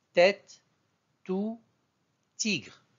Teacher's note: Donc, la troisième lettre de l'alphabet T se prononce au niveau de la pointe de la langue qui vient toucher les dents, les incisives centrales et latérales, tout en ouvrant la bouche pour libérer brusquement l'air.